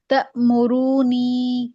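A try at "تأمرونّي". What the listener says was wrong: نہ تأمرونی، نون پہ شد ہے. ہم ہم ہاں، ادغام مع الاشمام، اظہار مع الروم.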